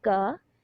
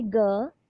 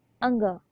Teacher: जिनके उच्चारण में श्वास अल्प मात्रा में निकले उन्हें क्या कहेंगे, अल्प प्राण व्यंजन कहते हैं